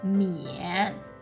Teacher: The initial is Mo, and the final is Yi An, and it is falling rising tone